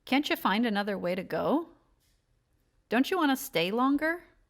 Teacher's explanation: reductions with t plus u which makes the CH sound